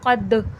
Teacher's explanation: दाल हुर्फ़ क़लक़ला है, जो मैंने बताया आवाज़ पलट कर सुनाई देगी।